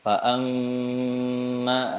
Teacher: فأما اليتيم فلا تقهر fa'amma ini mim bertasdid itu kondisi gunnah paling sempurna. Jadi saat kita mengucapkan huruf mim atau nun bertasdid, maka seluruh aliran suara itu lewat khaysum, lewat hidung. Makanya kalau kita tutup rongga hidungnya pasti suaranya akan berhenti.